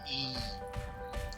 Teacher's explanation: A língua está quase encostando ali, o dorso da língua está quase encostando no céu da boca, ela está quase gerando uma obstrução